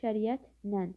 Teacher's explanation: Şəriətlə sözündə isə i ə saitlərin arasına y samiti əlavə olunur. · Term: səs artımı